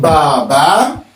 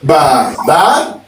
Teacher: the first vowel will carry a lower tone, and the last one at the very end would have a high tone because it's ba, ba, ba, ba, Baba.